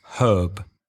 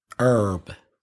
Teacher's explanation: the Americans do not pronounce the H at the front of herb, where British English speakers do.